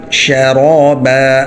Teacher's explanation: شرا، را موٹا ہوگا، با دو زبر با، شرابا، وقفاً شرابا۔ اب اس کو شرابو نہیں پڑھنا، با کو باریک ہی رکھنا ہے ، ٹھیک ہے، شرابا، صاد زبر صا، صاد موٹا ہوگا، سین